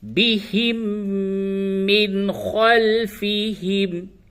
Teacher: یہ میم ساکن کا میم میں ادغام ہوگا